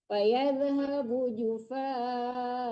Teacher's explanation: Kalau mau berhenti di situ boleh karena ada waqaf, tapi dipanjangkan a-nya, tidak boleh dimatikan.